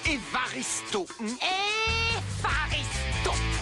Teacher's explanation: on prononce V une labiodental